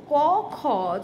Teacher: জিহ্বার শেষ কণ্ঠের শুরু, সেই ছোঁয়াতে ক, খ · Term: অঘোষ